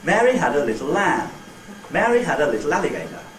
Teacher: We have to squash the time amount, for those 4 syllables quite considerably to fit them into more or less the same time as I took for lamb in the other utterance.